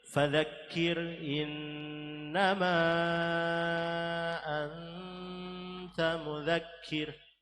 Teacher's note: Fadzakir ra tarkik karena ra sukun didahului kasrah.